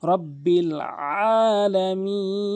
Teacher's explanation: আইনটি হলকের মাঝখান থেকে চাপ দিয়ে উচ্চারণ করতে হবে